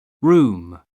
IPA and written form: ruːm (room)